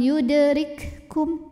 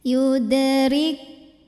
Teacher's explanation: Maka huruf kaf pertama ini lebur ke kaf yang kedua. Jadi jangan dikeluarkan dulu anginnya seperti kaf sukun.